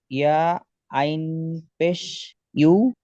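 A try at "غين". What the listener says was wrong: আইন নয়, গইন আছে। নুন ইয়াজের নি পড়লেন আবার না পড়ছেন। ইউগনি, নিকে টান দিতে হবে।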